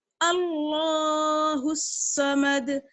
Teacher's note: تشدید پر جمانا ہے اور دال پر قلقلہ کرنا ہے